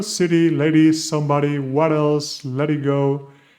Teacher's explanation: these sounds, even though they are T's and D's, they are truly the R, the soft R in Spanish, right? The simple R.